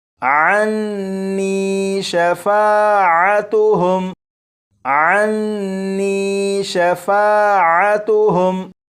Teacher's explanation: یہاں پر دیکھیں، یہ نون مشدد ہے، نون مشدد پر غنہ کریں گے